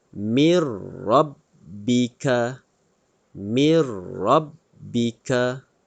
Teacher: Masukkan nun sakinah ke dalam bunyi huruf ra. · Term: idgham bila ghunnah